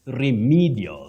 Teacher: That E takes the long high front sound E.